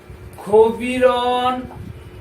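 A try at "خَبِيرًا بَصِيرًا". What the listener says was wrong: কবিরন রম কি বলছিস তুমি বুঝতেছো না? কবিরম বলে তো গুণা করতে হবে গুণা তো হচ্ছে না তোমার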